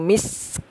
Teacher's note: Masih ada bunyi hamas huruf kafnya ya.